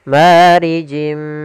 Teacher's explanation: Sama di sini ada kasratain bertemu dengan huruf mim yaitu idgham bi gunnah. Kita masukkan lagi tanwinnya ke huruf mim dan ditahan gunnahnya.